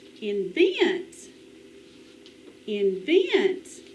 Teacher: The accent is on the second syllable.